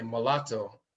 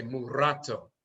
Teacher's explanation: There's no L in the Akhan language, there's a rolling R. So if there's a foreign word that enters the language and we repeat it, then we use the rolling R.